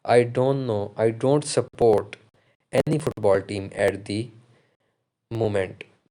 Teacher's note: the third example goes like the voice falls and then rise we use fall rise intonation at the end of statements when we want to say that we are not sure or when we may have more to add i don't know